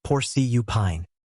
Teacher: Porcupine has stress on the first syllable. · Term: word stress